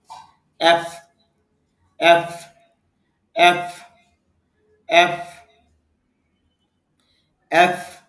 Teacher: নিচের ঠোঁটের পেট উপরের দাঁতের আগার সঙ্গে লাগাইয়ে এফ এফ এফ এফ এফ। এফ এর মতো ভি উচ্চারণটা হবে, যেমন ভি ভি ভি।